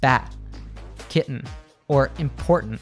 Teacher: we cut off the sound at the back of the throat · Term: glottal T